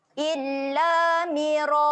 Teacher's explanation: Jadi bunyi dia adalah ra. Okey, kemudian kita panjangkan bunyi ra sebanyak 4 harakat.